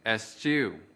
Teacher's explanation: Từ eschew có hai âm tiết. Trọng âm của từ eschew ở âm tiết thứ hai.